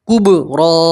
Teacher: बा में कलकला करते हैं, ठीक है।